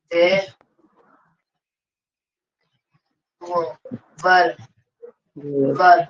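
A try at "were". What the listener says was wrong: वेयर, इसको वर बोलते हैं, वर, वधु वाला वर, और इसको वेयर बोलते हैं, वेयर।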